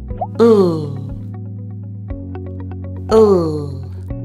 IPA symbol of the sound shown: l